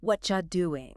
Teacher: The T in what? And the Y in you smashed together to create a ch sound. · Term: assimilation